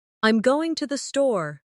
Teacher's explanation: For example, in the sentence, "I'm going to the store," the stress falls on going, and store. The other words are softer.